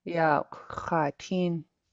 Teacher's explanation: The tones in Shinget give it a melody, and so you should hear yourself saying low, low, high when you pronounce these vowels